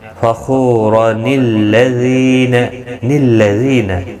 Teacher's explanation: نون کو لام کے ساتھ ملایا جائے گا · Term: نون قطنی